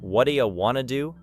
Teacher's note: a learner who understands English music knows that do you can connect